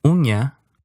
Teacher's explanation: This was an N made with the middle of your tongue against the roof of your mouth.